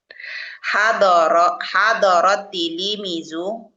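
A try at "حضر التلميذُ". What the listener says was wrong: Bukan tili. Pak, lamnya mati. Tilmi gitu.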